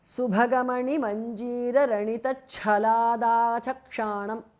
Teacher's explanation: Altogether, Subhaga mani manjira ranita chalat is a compound word. Subhaga bhas mahapranah, chalat cha mahapranah. The th in the end changes to the because of sandhi.